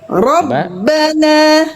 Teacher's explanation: Ro robbana tetap angkat pangkal lidahnya. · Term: ro tetap tebal